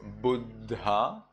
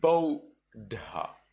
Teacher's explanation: when you have U followed by two consonants, U followed by DD, well then you read it instead of Buddha, you read it as Bodha